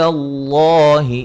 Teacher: لفظ اللہ کو خوب موٹا ادا کریں گے، اس سے پہلے حرف پر زبر ہے